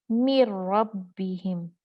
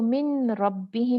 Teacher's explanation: नून एकदम रा में मुदगम हो गया